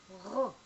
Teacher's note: Resh is not pronounced like the English R. It is more guttural.